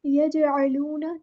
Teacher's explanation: यजअलूना, जीम पे कलकला हो रहा है, ऐन को मुस्तहलक से अदा करना है। वाव मद्दा आ गया तो एक अलिफ के बराबर लंबा करना है।